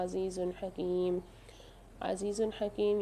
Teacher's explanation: یہاں دو پیش کی تنوین کے بعد ہا آ رہی ہے، یہاں پر بھی اظہار کر کے پڑھیں گے، غنہ نہیں کریں گے